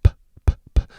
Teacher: P is an unvoiced labial plosive because you can't hear the voice.